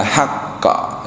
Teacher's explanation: di kopnya qalqalah maka dia mantul